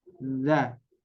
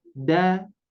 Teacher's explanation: Kalau huruf dzal keluar dari ujung lidah dengan ujung 2 gigi seri atas nih, ujung 2 gigi seri. Kalau yang ini ujung lidah dengan pangkal 2 gigi seri. Ya, pangkal itu lebih kepada gusinya.